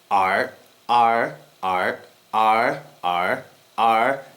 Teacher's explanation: tightening my throat on the last sound which is basically stopping the air from releasing a little bit